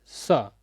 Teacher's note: तीसरा है दंत स जिसका उच्चारण आप बहुत सरलता और सहजता से करते हैं